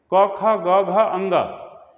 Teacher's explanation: घ का उच्चारण स्थान कंठ है क्योंकि वर्गीय व्यंजन का है तो क से लेकर के क, ख, ग, घ, ङ ये सभी के सभी कंठ की श्रेणी में आते हैं। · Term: कंठव्य व्यंजन